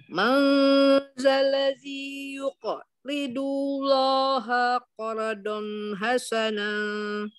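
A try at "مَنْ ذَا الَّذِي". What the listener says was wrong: Ya. Maza. Keluarkan lidahnya.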